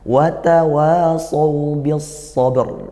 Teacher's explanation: kalau ra-nya ngalir sedikit, ba-nya ditekan. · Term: Qalqalah